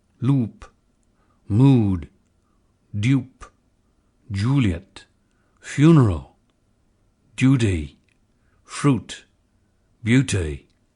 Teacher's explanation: retain the lip rounding of conservative rp in the goose lexical set